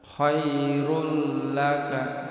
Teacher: tanwinnya ini melebur pada huruf lam, jadi pendek satu harakat tanpa dengung. Khairul laka melebur, jadi seakan-akan cuma dhammah. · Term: idgham bila gunnah